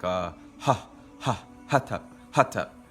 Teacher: for the hard H it's really just using more using more force as far as with your breath